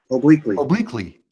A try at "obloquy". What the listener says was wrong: No, it's not obliquely. It's there's no L in it. Like there's no second L. Obloquy.